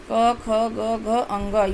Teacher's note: क वर्ग, जो कि कंठ से बोला जाता है। कंठ यानी गले से बोला जाता है।